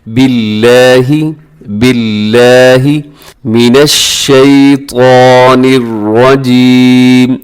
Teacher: آگے لفظ اللہ ہے، اسے اپنے باریک پڑھنا ہے کیونکہ لفظ اللہ کے لام سے پہلے باقی نیچے زیر ہے۔